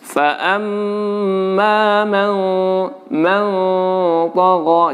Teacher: Di situ ikhfa, nun mati bertemu to, maka dengungannya, ya, ketika sedang mendengungkan nun atau nun sedang berdengung, maka posisi mulut kita adalah posisi persiapan di huruf to.